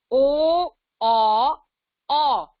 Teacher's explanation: कंठोष्ठ्य, कंठ और यानी गला और होंठ